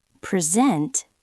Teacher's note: But if you stress the second syllable, present, it's a verb. It means to show something.